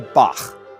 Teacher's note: The tongue bunches up in the back of the mouth and air gets pushed out and over it. The result is a low raspy sound.